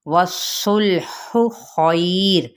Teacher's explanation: وَالصُّلْحُ خَيْرٌ، اب یہاں پہ واو کی زبر کو صوت صوت پر پڑھنا ہے، لام کو ہلانا نہیں، ہا کے وسط حلق سے ادا کرتے ہوئے اس کی پیش کو لمبا نہیں کھینچنا۔ خیر لی یہ پر ہے اور یہاں پہ یا لین کا قاعدہ ہو رہا ہے، اور یہاں پہ جب ہم وقف کریں گے تو وقف بالاسکان ہوگا اور ساتھ ہی را ساکن کر دیں گے، را ساکن ما قبل ساکن ما قبل فتحہ، تو پھر یہ را پر پڑھا جائے گا۔